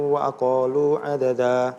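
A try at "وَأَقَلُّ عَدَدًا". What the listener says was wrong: Iya, di akhir ayatnya tuh ada tasdid ya. Wa aqallu. Jadi kalau ini ada tasdid seperti ini harus ada tekanan. Wa aqallu.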